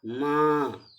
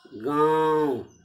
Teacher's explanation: यह ध्वनि नाक और मुंह दोनों स्थानों से होकर बाहर आ रही है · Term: अनुनासिक